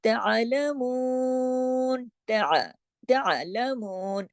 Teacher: आवाज हलक में चली गई, आवाज आइन पे चली गई जमाओं के साथ, लेकिन आपने इसको हिलाना नहीं है किसी सूरत भी।